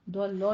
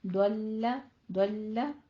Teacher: دلہ میں دعات کو پر پڑھنا ہے. لام کی صرف تشدید ادا کرنی ہے. لام کو پر نہیں کرنا. دولو نہیں کہنا.